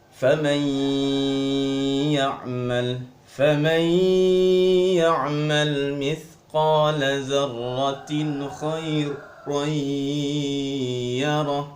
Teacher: Faman ya'mal digunnahkan, ya. Jadi agak ditekan, dilamakan sedikit, ya, disuarakan dengan suara yang gunnah. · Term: idgham bi gunnah